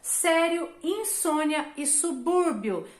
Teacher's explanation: são ditongos, porque elas têm uma vogal e uma semivogal na mesma sílaba